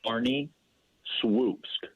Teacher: the l that you see there is pronounced like a w